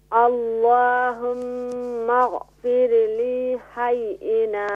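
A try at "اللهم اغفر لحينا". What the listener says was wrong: Lam make short.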